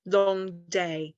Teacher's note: it's kind of that intense rhythm because both of them are strong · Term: spondy